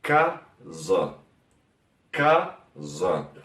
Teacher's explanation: lo que tenemos que atentar acá es la A al final, que se queda un poco más bajo, como casa.